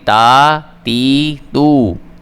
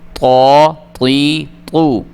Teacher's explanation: تا والے جو 3 حروف ہیں ان کو ہم نے باریک کر کے پڑھنا ہے، جبکہ تو والے جو ہیں ان کو ہم نے پر کر کے پڑھنا ہے۔ جیسے ہی ہم نے یہ تو پڑھنا ہے ہم نے اپنے منہ کو اوپر کی طرف کھولنا ہے۔